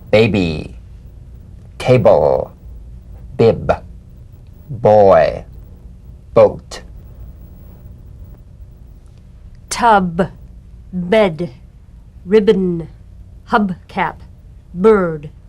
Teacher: the springing away from contact not by pressing the lips together you'll feel a gentle voiced pulsation on the lips